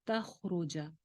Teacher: خوا کی آواز چلتی بھی رہے گی، خوا موٹا حرف بھی ہے، خوا کی آواز کو ہلانا نہیں ہے